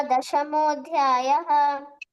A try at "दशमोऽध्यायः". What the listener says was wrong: Many places Visarga you didn't say clearly. You left Visarga, like you didn't pronounce it.